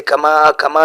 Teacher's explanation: کما میں چھوٹا مد ہے، 3 الف کے بقدر کھینچا جائے گا،